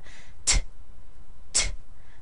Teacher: So when you say this, and if you put your hand in front of your mouth, you should be able to feel a puff of air coming out when you make a t